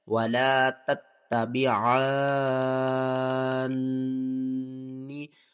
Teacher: ایک تا کے بعد دوسرا تا کے اوپر تشدید ہے تو دوسرے تا کو ہم نے سختی کے ساتھ پڑھنا ہے اور 2 بار پڑھنا ہے · حروف مدہ کے بعد اگلے حرف کے اوپر تشدید ہے، مد لازم ہے، 6 الف کے برابر کھینچ کر پڑھیں گے۔ نون مشدد ہے تو یہاں پر آپ نے غنہ کرنا ہے۔